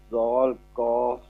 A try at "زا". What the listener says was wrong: زال نہیں یہ زا. زا کاف زبر زک.